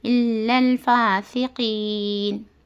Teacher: آیت ختم ہونے کی وجہ سے نون کے پر سکون دے کر ہم یہاں سانس ٹکانا ہے · ہوتا اور اس کے پہلے حرف مدہ ہے تو کیا ہے عارضی طور پر ہم مد لگا کر کھینچ کر 2 یا 4 یا 6 حرکت کے برابر ہم کھینچ کر پڑھنا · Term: مد عارض